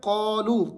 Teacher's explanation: شیاطینہم، شياطينهم قالوا، یہاں پر پہلے والا لفظ آ گیا قالو، قا موٹا ہے، اس کو تھوڑا سا آپ نے کھینچنا ہے، لو اس کے اوپر مد بھی ہے اور وہ مدہ بھی ہے، تو آپ نے اس کو کھینچ کر پڑھنا ہے 3 الف تک